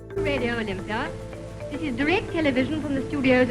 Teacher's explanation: Crisp consonants, no R at the end of words, certain long A's where Americans use a short A. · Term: RP